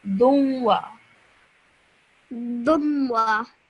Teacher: But what you want to do is you want to produce a slight nasal sound in your nose when you're joining the dal to the waw